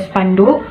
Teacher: gugus yang konsonan keduanya berupa konsonan hambat P dan K